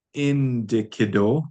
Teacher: We're not going to say ne ikido, ne ikido, ne ikido. There's no glottal there. We roll right on with indikido